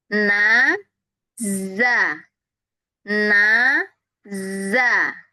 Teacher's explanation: Setelah nun bunyi, kita membunyikan zai itu, ujung lidahnya nggak bergerak setelah nun.